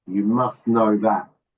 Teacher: the T is not pronounced, is it?